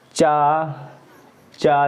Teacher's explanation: इसमें दोस्तों क्या होता है, तालु में, तब तालु में जीभ रगड़ती है, जब तालु में जीभ रगड़ती है तब ये चा बोल के देखेंगे, चा जीभ ऊपर जाएगी तलुआ के पास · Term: तालु वाले वर्ण